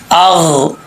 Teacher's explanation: غین کو پر پڑھیں گے، یہ حروف مستعلیہ میں سے ہے